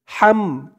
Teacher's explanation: গলার ভেতর থেকে আওয়াজটা চিকুন হয়ে বের হবে